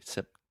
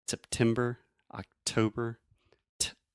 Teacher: I'm really aspirating, which means I'm breathing air out of my mouth and going t, making that pop sound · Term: true T